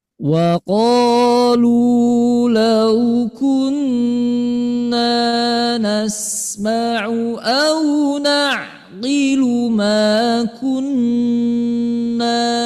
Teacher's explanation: Karena para ulama mengatakannya ini istilah namanya kunna musyaddada. Sehingga dengungnya harus sempurna.